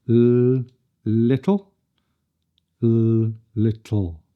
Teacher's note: The second L has a lower tongue position at the back of the mouth. This is how an L sounds if it comes after a vowel, or if it comes after a T or a D. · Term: dark L